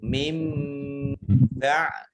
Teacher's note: Kemudian nun sukun bertemu dengan huruf ba, bacaan iqlab atau membalik. Baknya nun bertemu ba ya dibaca mim